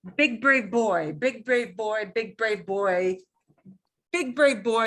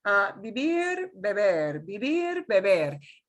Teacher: You feel the B, you feel the puff of air. In Spanish, you shouldn't feel very much of any air coming out.